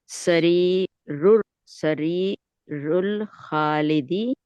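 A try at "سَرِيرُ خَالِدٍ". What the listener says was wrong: अभी रुल नहीं करेंगी ना क्योंकि अलिफ लाम नहीं आ रहा ना। रू। खालिदी नहीं करेंगे, दुन है तो दिन करेंगे।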